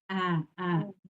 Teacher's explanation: ainnya ke tengah tenggorokan dan tidak naik ke hidung. Ee tapi dari tengah tenggorokan.